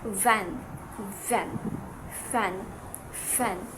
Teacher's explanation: these sounds are articulated by using the lower lip and our upper teeth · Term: labiodental